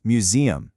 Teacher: It's museum stressing that middle syllable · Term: syllable stress